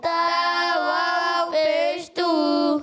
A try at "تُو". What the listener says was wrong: اچھا زیادہ ہی کھینچ رہے ہیں آپ، منہ کو زیادہ کھول لیں۔ تا واو پیش تو بہت زیادہ ہو گیا، تا اتنا نہیں، کم کھینچنا ہے۔ تا دیکھیں